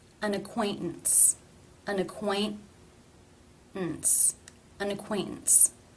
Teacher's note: The first T, it's followed by the schwa and N sounds. Therefore, it is a stop.